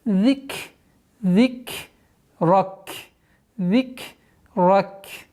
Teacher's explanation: Ра твердый звук. Нужно обращать внимание, чтобы межзубное произношение заль было полноценным. Каф при остановке аннулируется, огласовка, и уходим в сукун.